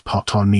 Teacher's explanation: Malays say Patani, pronounced as Patani with a very brief first syllable and stress on the second syllable